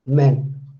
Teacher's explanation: ma has a quality of stop, ma has a quality of nasal as well. So you need to remember that it has two manners.